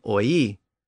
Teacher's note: Of course, oil eventually lost that L sound at the end, and it just became oi. And then it lost the O sound at the beginning, and it just became we.